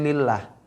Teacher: Kecuali lillah. Itu lam tipis.